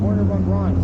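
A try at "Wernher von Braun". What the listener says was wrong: Werner von Braun is German. You don't pronounce the W. Werner von Braun.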